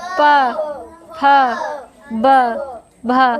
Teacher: जब भी हम पा वर्ग के वर्णों का उच्चारण करेंगे तब हमारे ओठ बंद हो जाएंगे। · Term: ओष्ठ्य ध्वनियाँ